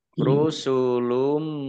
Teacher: Kudziba, dalnya dibaca double, ada tasdidnya. Rusulum, domah tanwin bertemu dengan huruf mim, bacaan idgham bi gunnah, idgham masuk bi dengan gunnah mendengung, masuk dengan mendengung. Maksudnya masuk ke huruf mim, domah tanwinnya tidak dibaca.